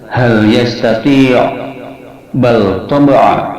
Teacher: ' lam' dalam 'bal' dan 'hal' dibaca sebagai ' izhar' dengan jelas. · Apabila bertemu dengan semua huruf hijaiyah, maka semuanya wajib dibaca idhar, seperti lafaz hal yastati', bal taba'a, maka di sini bal dan hal lamnya dibaca idhar, jelas